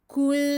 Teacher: Outre toutes les indications que j'ai prononcées donc pour le premier mot, anta, ici, il faut ajouter ce qu'on appelle le damm irja'. Donc on va faire une damma avec les lèvres en avant. On va revenir avec ses lèvres à la normale pour le soukoun et de façon longue, prolongée.